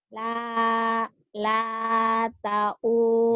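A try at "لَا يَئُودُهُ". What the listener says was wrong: Ya, titiknya di bawah. La ya'uduhu.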